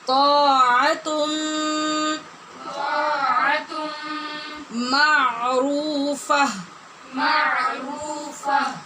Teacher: نون تنوین کے بعد میم حروف یرمالون میں سے ہے، لہذا غنّے کے ساتھ ادغام ہو رہا ہے